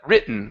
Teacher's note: we go from the vowel straight to the n and skip over the T